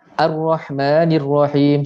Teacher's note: Hamzah wasal ni kalau kat tengah-tengah dia jadi mati. Dia macam tak ada · seolah-olah nun baris bawah lompat terus dekat ra ataupun lam. Jadi macam dia tak ada.